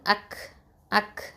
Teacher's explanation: இந்த காஃப்லயும் ஹம்ஸ் தன்மையா கொடுக்கணும் சிபத்த கொடுக்கணும்